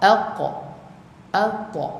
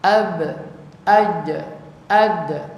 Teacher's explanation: qaf dengan ta sahaja dia ni lantunan dia hampir ke fathah. Tapi huruf ba jim dal condong ke depan. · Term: qalqalah